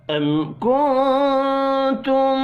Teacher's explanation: میم ساکن کے بعد کاف ہے، اظہار شفوی ہوگا